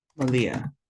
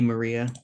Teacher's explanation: in Lushootseed, we don't have R's, so we replace those with L's